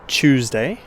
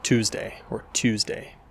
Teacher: T's at the start of words often get pronounced more like a ch sound in Australian English. So for example, the word Tuesday in my accent sounds more like Tuesday, whereas in an American pronunciation, it might be more like Tuesday or Tuesday.